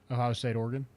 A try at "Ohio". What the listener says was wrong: It sounded like you like really wanted to emphasize the O. Ohio. You sounded like you were an Ohio State